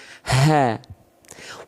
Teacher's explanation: Dari tenggorokan paling bawah atau sering kita sebut atau panggil dia dengan pangkal tenggorokan. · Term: hak besar